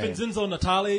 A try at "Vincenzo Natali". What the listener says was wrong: You put the accent in the wrong place. That's all.